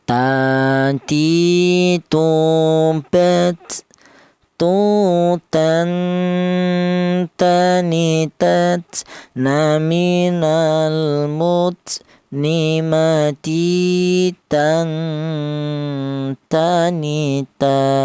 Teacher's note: huruf ta ini keluarnya huruf berasal dari ujung lidah menyentuh pangkal gigi seri bagian atas